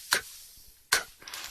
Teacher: Haces el sonido con aire en la garganta, pero sin cuerdas vocales.